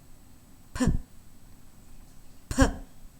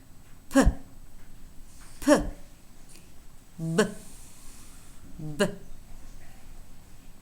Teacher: consonant sound for example for the sound we can say that it is voiceless that it is bilabial and that it is stopped okay it's a voiceless bilabial stop and if you were to